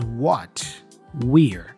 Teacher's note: So the T for what here, he doesn't pronounce, so he drops that.